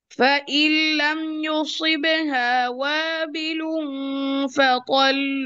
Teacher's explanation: এখানে লামের সাদা আছে, তো আমরা যেটা করব সেটা হচ্ছে লামটাকে একটু সময় দিব, একটু চেপে ধরবো , হ্যাঁ একটু প্রেসার দিব, যেমন ওয়াবিলুন ফাতাল তল, এইটুকু যেন